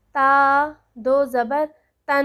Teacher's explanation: ناک میں غنہ لے جاتے ہیں، ناک سے آواز نکلتے ہیں، تن دراز بھی کر لیتے ہیں